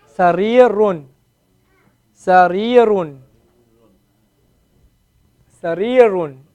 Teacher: You hear the elongation on the raw? Raw and the ya?